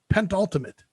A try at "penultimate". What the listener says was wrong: You put pent. Yes.